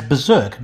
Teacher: we pronounce berserk as berserk dropping the first of two r's